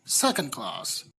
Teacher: heavy-handed if the compound words is comprised of number and noun then primary stress is on the second word secondary stress is on the first word